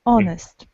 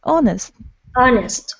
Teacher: and honest because the sound o h is not pronounced and the word starts not with h but with o